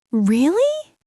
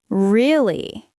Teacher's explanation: If you say, really? With a rising tone, it shows surprise. If you say it with a falling tone, it shows you understand. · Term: intonation